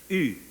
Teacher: It's E, but round your lips, and E becomes a different sound.